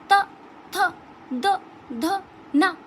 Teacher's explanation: जब हम ता वर्ग के व्यंजन का उच्चारण करते हैं तो जीव का जो अग्रभाग है वो हमारे दांतों को स्पर्श करता है। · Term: दंतीय व्यंजन